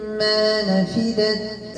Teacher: إدغام بغنة مقدارها حركتين